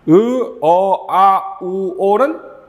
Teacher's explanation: 으, 어, 아, 우, 오는 뒤로 살짝 가죠. 후설모음이에요.